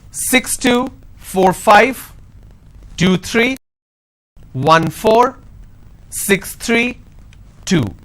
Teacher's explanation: the moment I drop my tone that means it's the end of the series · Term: intonation